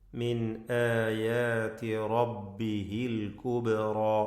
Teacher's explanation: റബ്ബിഹിൽ കുബ്റ. അൽ കുബ്റ, ബാഇൻ്റെ സുക്കൂൻ ഖൽഖല നൽകി ശബ്ദം ചലിപ്പിച്ച് വ്യക്തമാക്കണം